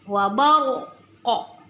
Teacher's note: ini qaf adalah huruf qalqalah. Jadi terakhir dia tetap terbaca.